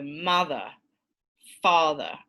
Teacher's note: So if you have a simple disyllabic word, two-syllabic word like mother, that there should be this stressed syllable and then this unstressed central vowel at the end